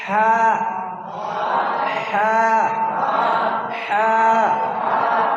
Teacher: আগে বাতাস বেরাবে, তারপরে হা শব্দ হবে